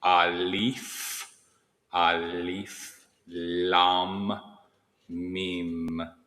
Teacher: both the Alif and the Lam have the liquid L, which is significant because you touch that top part of your mouth